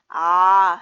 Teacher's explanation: 턱이 이렇게 밑으로 내려가죠. 선생님 좀 오버했지만 이때 혀도 낮아지고요.